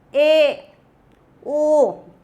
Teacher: ऐसे स्वर जिनका उच्चारण करते से मुंह, बंद मुंह का हल्का सा खुलता है, उसको बोला जाता अर्ध संवृत। ए, ओ, यानी बंद जो है, बंद मुंह प्रायः आधा खुलता है, इसको बोला जाता अर्ध संवृत।